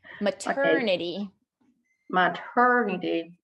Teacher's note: When the T starts a stressed syllable, it is no longer a flap T. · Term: real T